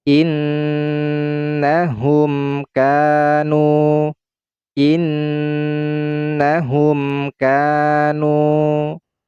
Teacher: huruf mim ini kita baca secara izhar atau secara jelas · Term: izhar syafawi